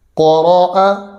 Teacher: قاف زبر قا، را زبر را، قرا، حمزہ زبر ا، قراء. قاف کو ہم نے پر پڑھا اور یہ حروف مستعلیہ میں سے ہے. اس کو ہم باریک کسی بھی صورت میں نہیں پڑھیں گے.